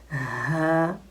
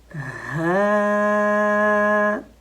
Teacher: ہمارے گلے کے 3 حصے ہیں نا، ٹھیک ہے، اوپر والا حصہ، درمیان والا اور نیچے والا حصہ جو سینے کے ساتھ ملا ہوا ہے، ٹھیک ہے۔ یہاں سے حرف ہاں ادا ہوتا ہے